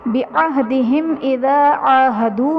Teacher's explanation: بعہدہم اذا عاہدوا میں میم ساکن کے بعد حرف با اور میم کے علاوہ حمزہ آ رہا ہے تو یہاں پر اظہار شفوی کا قاعدہ ہوگا، یعنی میم ساکن میں غنہ نہیں کریں گے